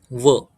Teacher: ज्यावेळेस आपण उच्चार करतो तर ओठ आणि वरचे दात हे दोन्ही टच होतात खालचा ओठ आणि वरचा दात त्याच्यामुळे त्याच उच्चार दंतोष व वकारस्य दंतोषठम नंतर जिव्हामूल जिव्हामूल हे